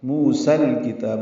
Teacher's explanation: سین پر کھڑا زبر تھا موسا، لیکن الکتاب کا حمزہ عارضی ہونے کی وجہ سے سین کو لام سے ملا دیں گے